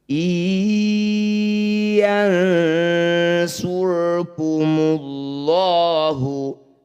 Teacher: Bunyi 'nun' disisipkan langsung ke dalam bunyi 'ya'. Jangan lupa untuk melafalkannya dalam bentuk nasal selama dua harakat. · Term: idgham bighunnah